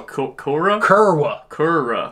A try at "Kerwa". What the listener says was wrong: Kerwa. No, Kerwa. It's a W. Kerwa.